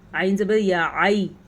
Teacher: جو یا لین ہے وہ نرمی کے ساتھ پڑھا جاتا ہے، یعنی اس کو کھینچا نہیں جاتا۔ بعض لوگ یا لین کو کھینچتے ہیں عینین، تو یہ غلط ہے، کیونکہ لین میں لفظ کو کھینچ کے پڑھنا جائز نہیں ہے، بلکہ مدہ میں لفظ کو کھینچ کے پڑھا جاتا ہے۔